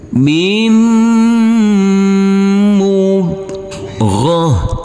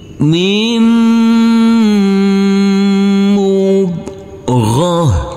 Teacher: Huruf mim ini langsung masuk ke huruf mim yang bertasdid ini karena di sini ada huruf nun yang bertemu dengan huruf mim, huruf nun sukun, maka ini adalah bacaan idgham bi gunnah. Huruf mim yang bertasdid ini kita dengungkan, kita tahan serta kita tekan.